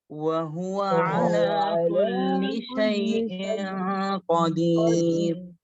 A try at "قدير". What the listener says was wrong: হ্যাঁ قدير قدير এরকম নাকে বাজানো যাবে না, قدير।